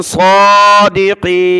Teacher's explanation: صاد کو موٹا کیا اور کھڑا زبر کی وجہ سے اوپر کھینچا